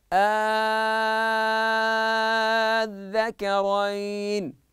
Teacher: الوجه الاول المد ست حركات وهو الابدال